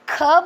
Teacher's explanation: जैसे कि जो वर्णमाला सीखना जिन्होंने अभी शुरू किया है तो वो लोग अपने मुंह के आगे हाथ रख कर के जैसे कि क बोल रहे हैं तो क बोलते समय मुंह से उच्चारण करते समय हवा या दबाव नहीं पड़ रहा है, लेकिन क के साथ ख बोलते समय दबाव भी पड़ रहा है और मुंह से हवा बाहर भी निकल रही है